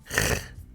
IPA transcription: ʁ